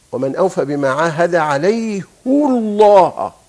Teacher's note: لما حصل ضم للهاء حصل تفخيم للام، لأنك لو كسرتها سترقق